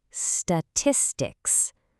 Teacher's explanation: The stress hits right there on that second syllable.